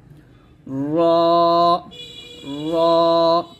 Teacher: জিহ্বার আগার উল্টো পিঠটা আমরা এই যে তালুর সঙ্গে লাগিয়ে রটা মোটা করে উচ্চারণ করব, র র, এরকম ভাবে।